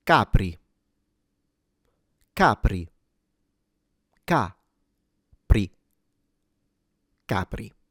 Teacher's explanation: since this is an Italian word, capri, the stress is at the beginning on the first syllable. Apart from that, the R, of course, is lightly trilled.